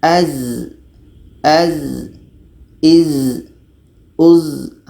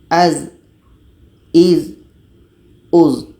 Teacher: Kita baca az, iz, uz. Zai ini letaknya pada ujung lidah menempel dengan bagian atas gigi seri bawah. Ujung lidah menempel dengan bagian atas gigi seri bawah. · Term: jahar